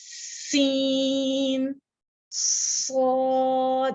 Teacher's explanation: सीन और स्वाद में क्लियरली सीटी की आवाज आ रही